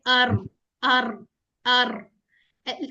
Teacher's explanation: र के अंदर हमारी तकरीर होती है।